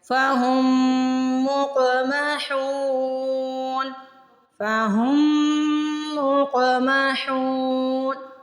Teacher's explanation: ہا کو حلق سے ادا کرنا ہے اور ہا کے آگے واو مدہ آ رہی ہے · فہم قوف پہ قلقلہ کرنا ہے، قوف ساکن آ رہا ہے، قلقلہ یعنی ہلا کے ادا کریں گے